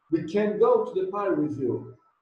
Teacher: Observe que o can é stressed, ele é acentuado, eu falei com ênfase